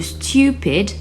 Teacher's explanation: De plus, une voyelle courte suivie par une seule consonne est une syllabe faible. On peut prendre l'exemple de stupid, où la deuxième syllabe, pid, est faible.